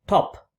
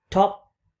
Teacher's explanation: you can pronounce the word top with p released, that is, you open the lips after producing p, or you can even produce the sound without releasing air at all. Like you can say top, that is, you don't release.